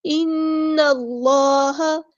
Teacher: کے برابر رکیں گے، یہاں پر ہو رہا ہے غنہ زمانی، اس میں ہم ناک میں آواز جو ہے نا وہ ٹھہراتے ہیں · نون پہ یہاں پہ غنہ زمانی ہو رہا ہے، ایک الف کے برابر رکیں گے